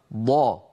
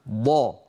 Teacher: من حافه اللسان اليمنى او اليسرى او منهما معا مع ما يحاذي ذلك من الجدار الداخلي او الصفحه الداخليه للاضراس العليا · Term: الضاد